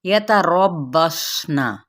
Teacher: را کی زبر کو با کے ساتھ ملائیں گے، صاد پر پڑھا جائے گا